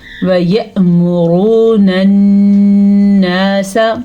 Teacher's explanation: حمزہ کے اوپر پھر سے ساکن آیا ہے تو چھوٹا سا جھٹکا پیدا ہوگا